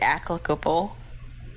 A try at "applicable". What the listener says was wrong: You're putting a C in there.